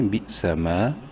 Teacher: میم الف زبر ما، الف مدہ ہے، میم کو ایک الف کے برابر لمبا کریں گے